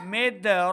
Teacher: دال حرف قلقلہ سے ہے، یہاں پہ دال ساکن ہے تو قلقلہ اس کے اوپر ظاہر کریں گے